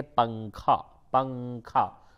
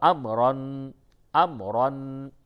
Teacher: تو وہ آوے تو ناک میں آواز لے جا کر کے گنگناتے ہیں، جیسے اردو میں ہم لوگ بولتے ہیں پنکھا، پنکھا. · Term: اخفا